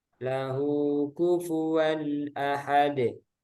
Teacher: Idhar halfi. Karena hamzah huruf tenggorokan.